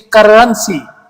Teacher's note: they're rolling their tongue when they're saying R